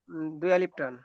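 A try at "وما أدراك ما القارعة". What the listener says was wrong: 3 আলিফ টান হবে। হ্যাঁ, মাদ্দে মুনফাসিল। ওয়ামা আদরাকা মাল কারিআহ।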